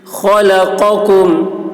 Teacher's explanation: خا کی آواز موٹی ہوگی، قاف کی آواز بھی